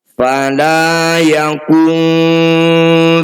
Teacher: bunyi nun sukun kita dengungkan dua harakat saat dengung lisan kita sudah ada di huruf Fa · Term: Ikhfa